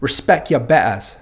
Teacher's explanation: drop the R at the end of every word. I believe this is called the rhotic R when it's pronounced, and you'll hear this in received or proper British pronunciation as well.